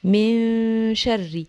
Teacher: الغنة بتطلع من الخيشوم أو من الأنف